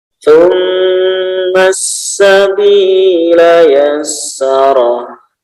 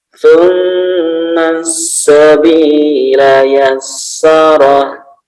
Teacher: Nah, summa di sini ya, sa-nya hati-hati di ujung lidah ya. Tidak seperti sa biasa, tapi dia di ujung lidah ya. Lidah dijulurkan sedikit ke gigi ya.